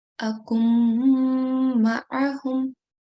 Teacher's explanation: And whenever we have to do partial assimilation, the rule says that we have to do a nasal sound, okay? In this case, we have to do a 2-second nasal sound. So the way we say this word is akum ma'ahum, and underneath this, to facilitate, to show you what's actually going on, this is how we are actually reading it.